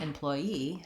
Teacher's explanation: employee has stress on the last syllable the first one has stress on the same syllable as employer